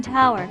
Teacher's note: an aspirated T sound as in tower